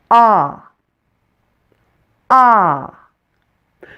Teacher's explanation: Now let's look at the short O. The short O is a central vowel, so you'll need to pull your tongue back a little from your front teeth to pronounce it. And open your mouth as big as possible.